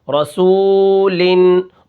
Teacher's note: اب را کے اوپر زبر ہوتی ہے تو را موٹی ہوتی ہے